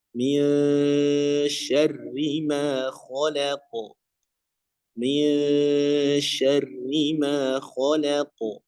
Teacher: Ketika dengungnya atau menyamarkan nun sukunnya itu mempersiapkan huruf setelahnya yaitu huruf syin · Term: ikhfa